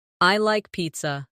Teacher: Let your voice fall gently at the end.